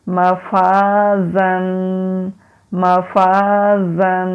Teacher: یہاں زا ہے، تو جب ہم زا پڑھتے ہیں ہماری جو زبان کی ٹپ ہے وہ نیچے والے سامنے والے جو دانت ہیں ان کے مسوڑوں کے ساتھ مضبوطی سے لگتی ہے، تو پھر یہ والی بزنگ ساؤنڈ ہوتی ہے